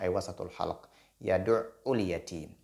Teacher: Et ayn sort au milieu de la gorge. Donc, du milieu de la gorge, ay wasatul halq.